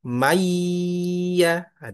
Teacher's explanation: jadi cuman tasydid maka dia tidak boleh dengung. Mayyaah tidak dengung.